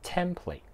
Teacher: 注意个重音咧系喺第一个音节度嘅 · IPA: /ˈtem.pleɪt/